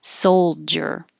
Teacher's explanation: This doesn't look like it has a J in it at all, but we don't have to pronounce the D. Make a J. Soldier.